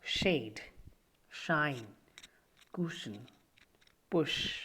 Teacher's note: front of the tongue is also raised towards the heart bite the air passes through a narrow passage with audible friction the soft palate is raised to shut off nozzle passage the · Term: fricatives